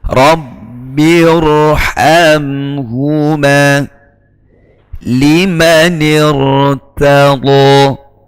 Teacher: ra mati sesudah kasrah wajib dibaca tafkhim sebab didahului oleh hamzah wasal.